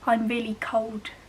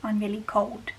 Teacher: If you've got a stronger Black Country accent, you might say cold with a W instead of an L, so I'm really cold instead of I'm really cold.